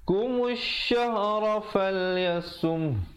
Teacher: mim baris depan terus naik di atas syin. Di situ alif lam syamsiah.